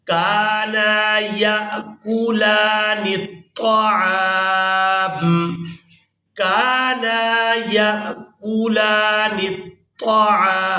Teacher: کاف کو بھی الف مدہ کی وجہ سے، نون کو بھی الف مدہ کی وجہ سے کھینچ کر ادا کرنا ہے